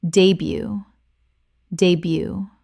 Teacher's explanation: Two syllables, and the T at the end is completely silent.